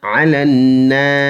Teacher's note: نون مشدد ہے، جماؤ کے ساتھ پڑھیں گے، اس میں ایک الف کی مقدار غنہ کریں گے